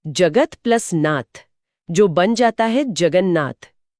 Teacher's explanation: यहां त बदलकर न हो गया।